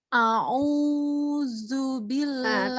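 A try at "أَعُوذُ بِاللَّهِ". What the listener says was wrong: Masih kepanjangan. U-nya tidak terlalu panjang. U-nya tidak terlalu panjang. Sekali aja ngayunnya. A'udzu billahi minasyaitonir rajim.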